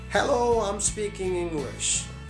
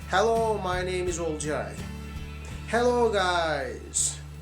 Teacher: they start with the high sound and they go down as if you're climbing down the stairs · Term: intonation